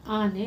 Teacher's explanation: 2 ಅಥವಾ 2ಕ್ಕಿಂತ ಹೆಚ್ಚು ಮಾತ್ರ ಕಾಲದಲ್ಲಿ ಉಚ್ಚರಿಸಲ್ಪಡಬಹುದಾದ ಅಕ್ಷರಗಳಿಗೆ ಗುರು ಅಂತ ಹೇಳ್ತಾರೆ. ಉದಾಹರಣೆ: ಆನೆ ಎಂಬ ಶಬ್ದದಲ್ಲಿ ಆ ಅಕ್ಷರವನ್ನು ಉಚ್ಚರಿಸಲು ತಗಲುವ ಸಮಯವೇ 2 ಮಾತ್ರ ಕಾಲ. ಅಂದರೆ ಉದ್ದವಾಗಿ ಹೇಳೋದನ್ನು ಗುರು ಅಂತ ಹೇಳ್ತಾರೆ.